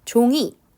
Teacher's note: 종이 를 발음 할 때 는 입 모양 이 둥근 모양 에서 편평 한 모양 으로 바뀝니다